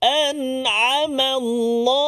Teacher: Maka kita kena jelaskan, jangan dengung. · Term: izhar halqi